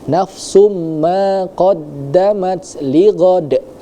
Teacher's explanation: Nah, di bagian lighadnya itu ada hukum qalqalah yang mana dia pantulannya itu harus lebih besar karena dia qalqalah qalqalah kubra. Karena kita wakaf di sana maka pantulannya harus harus lebih terdengar lagi ya. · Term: qalqalah kubro